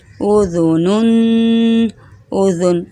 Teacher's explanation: ذال کو زبان نکال کر پڑھنا ہے، نرمی کے ساتھ، دونوں دانتوں کے بیچ میں زبان رکھ کر